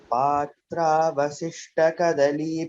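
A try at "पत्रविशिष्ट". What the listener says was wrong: Vashishta. Again, it is not Vasishta, it is Vashishta. Slight difference. It instead of Patra Vasishta, please chant as Patra Vashishta. Sha. All of you please note this word Patra Vashishta. It is not Patra Vasishta.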